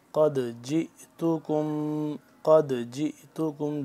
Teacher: قاف کو موٹا پر کر کے پڑھیں گے، اور دال کو ہم کیا کریں گے، قلقلہ کریں گے، دال کو، کیونکہ دال ساکن ہو گیا۔